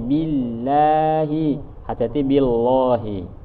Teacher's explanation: Kalau di sini laf lam di lafzul jalalah tipis karena sebelumnya kasrah.